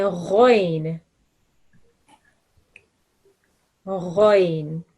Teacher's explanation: It's said with your mouth rounded, and it's one of the thick and heavy letters that we have.